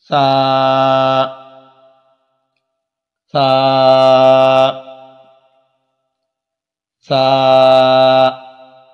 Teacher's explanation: سا کے اندر سیٹی کی آواز نہیں ہونی چاہیے۔ عمومی طور پر جو بہت سارے ہمارے پڑھنے والے پڑھتے ہیں تو سا کے اندر سیٹی کی آواز ان کی آتی ہے، جس وجہ سے سا کا صحیح مخرج جو ہے وہ ادا نہیں ہو پاتا ہے۔